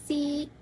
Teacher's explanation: konsonan geseran, laminopalatal, tak bersuara